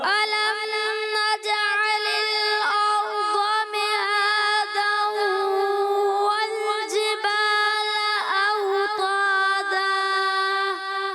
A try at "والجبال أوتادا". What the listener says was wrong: اوتادا. تا موٹا نہیں، اوتادا نہیں، اوتادا. اچھا والجبال، جبال نہیں، والجبال، جبال جیم جیم جیم، والجبال.